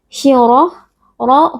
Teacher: ro huruf tafkhim kita baca dengan mengangkat pangkal lidah karena di sini ro berharakat fathah